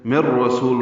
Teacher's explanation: مر رسول میں نون ساکن کے بعد را آنے کی وجہ سے ادغام کامل ہے